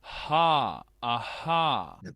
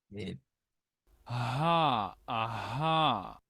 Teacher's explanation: la H nosotros decimos que parece como una J Ja Ajá porque es un sonido como aspirado verdad como aspirar aire como cuando se dice que alguien está jadeando de hecho los jadeos provienen de esa misma zona ajá ajá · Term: la H tradicional